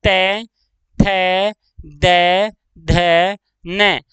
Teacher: हमारी जीभ दांतों को छू रही है, परस्पर दो हिस्सों को स्पर्श कर रही है।